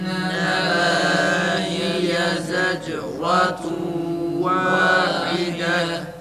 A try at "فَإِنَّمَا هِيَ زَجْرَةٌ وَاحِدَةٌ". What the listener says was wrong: Sabah acele ediyorsun biraz yavaş. Zec'urantun. Ra tam A sesi çıkarılarak kalın okunsun.